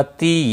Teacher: تی یا مدہ ہے، ایک الف کے برابر کھینچ کر پڑھیں گے